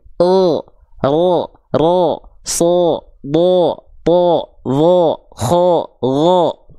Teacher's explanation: bunyi vokal A-nya kehalangin sama pangkal lidah, ketika keluar jadi vokal seperti O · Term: huruf tebal